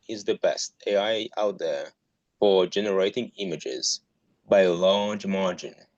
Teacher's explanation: I liked how you gave emphasis to best, and I think large.